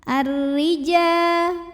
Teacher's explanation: Di sini ada hukum alif lam syamsiyah karena alif lam yang menghadapi huruf syamsiyah yaitu ra. Maka lam tidak kita baca, langsung masuk ke ra atau diidghamkan. Ar-rija. Huruf ra dibunyikan secara tarqiq sebab barisnya di bawah kasroh.